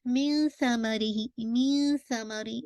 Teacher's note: نون ساکن کے بعد سا ہے، آپ کی اخفا کے لیٹرز ہیں، تو آپ نے تھوڑی سی نون ساکن کی آواز کو چھپانا ہے